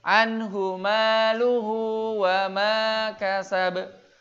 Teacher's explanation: Hu yang kedua ini dibaca panjang karena bertemu dengan waw. Berarti matnya mat silah.